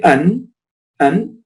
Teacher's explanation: The noon is articulated from the tip of the tongue.